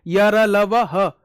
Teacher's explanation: य, र, ल, व, ह घोष ध्वनियां हैं